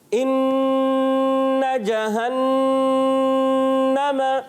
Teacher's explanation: 2 حروف ایسے ہیں جب آئیں گے ان میں ایک الف کا غنہ ہوگا. ناک میں آواز لے کر جائیں گے اور ایک الف پکڑ کے رکھنا ہے, چھوڑنا نہیں ہے